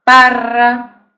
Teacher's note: ese fonema vibrante múltiple va entre dos vocales